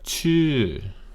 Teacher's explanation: Now if we look, we see this tone marker right there on top, shaped like a little hill. You go up and you come down, and you come down considerably further. So, chü. Clean that up a little bit.